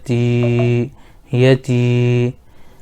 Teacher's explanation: یا ساکن سے پہلے تا کے نیچے زیر ہے اس لیے یا مدہ ہوگا, ان کو تھوڑا کھینچ کر پڑھیں